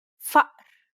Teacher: The second sound is actually deeper in the throat than the first, so deep in fact that it causes the vocal cords to stop momentarily, causing a buildup of pressure. It's the sound you make in between the and o in uh-oh.